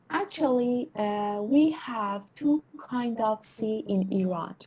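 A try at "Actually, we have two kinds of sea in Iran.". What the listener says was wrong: هنوز زیاده سرعتتون. آرومتر.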